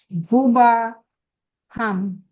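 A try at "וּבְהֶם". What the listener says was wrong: Uva. No, not ham. No, it's not ham. Look at the goal. Uva hem. Remember that I said about I thought I think certainly that a two-syllable word, or even with haaretz, which has a ha is the. Eretz is land. Haaretz is the land.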